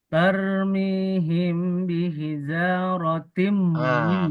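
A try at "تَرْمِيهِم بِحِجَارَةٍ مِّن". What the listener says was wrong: kalau seperti cara baca itu bukan ikhfa, itu izhar malah. Coba diikhfakan dulu, Pak.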